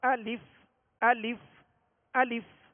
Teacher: حمزہ پر زبر ہے اور اس کو کھینچیں گے نہیں، بغیر کھینچے بغیر جھٹکا دیے آواز اور منہ کھول کر ادا کریں گے